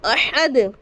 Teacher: احد قلقلہ کریں گے کیونکہ حرف قلقلہ ساکن ہو گیا